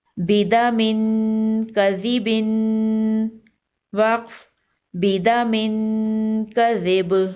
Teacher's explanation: तनवीन पर गुन्ना करेंगे और वक्फ की सूरत में बा पर कलकला होगा।